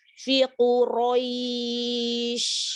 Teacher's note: Ro berharokat fathah maka ditebalkan. Harus jelas hurufnya. · huruf shin apa sifatnya? Hamas tafashi. Hamas rokhawah tafashi.